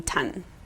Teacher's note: sometimes kids will stop the S so it sounds more like a T